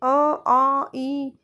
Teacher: अ वृत्त मुखी जिसमें मुंह में गोलाकार ना बने उसे कहते हैं जैसे अ आ इ इसमें हमारा सीधा मुंह खुलता है। इसमें कोई भी गोलाकार आकार नहीं बन रहा।